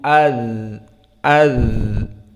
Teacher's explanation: Di saat disukunkan za masih ada suara iz, iz. Dan tidak ada nafas. Tidak iz, iz. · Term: rakhawah